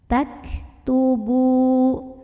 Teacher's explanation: ini kaf hati-hati ketinggalan anginnya ya, ada anginnya belakangnya hamas. Tak tubu, bu mad tabi'i karena ada waw sukun sebelumnya dhammah baca ba-nya 2 harokat.